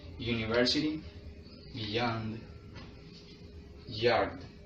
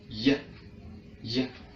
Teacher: the air stream is continuous without any interruption, so there is not enough obstruction to create friction. And it is polaral because it is similar to alveopolarals, but it is produced further but towards the velum. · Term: glide or approximant